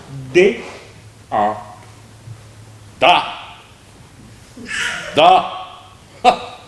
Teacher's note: la consonne D par exemple se prononce en donnant du bout de la langue au-dessus des dents d'en haut.